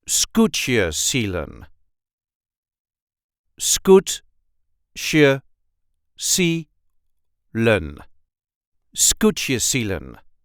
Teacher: There is a light emphasis on the first syllable